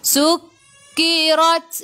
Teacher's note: Ra baca dengan tebal, ra baris atas. · Ta ada sukun, kena baca dengan ada angin sedikit sahaja, jangan banyak. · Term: Tafkhim